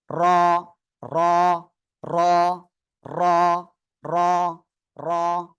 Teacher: জিহ্বার আগার পিঠ, তার বরাবর উপরে তালুর সঙ্গে লাগাবো আমরা